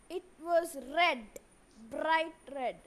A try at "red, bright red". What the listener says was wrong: be careful with your R. It's not red, bright red. It's red, bright red. So you should remember the way you have to roll the tongue when you pronounce the letter R.